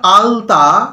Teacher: জিভটা সামনের দিকে যাচ্ছে এবং দাঁতের ওপর দিকটায় স্পর্শ করছে, দাঁতকে স্পর্শ করছে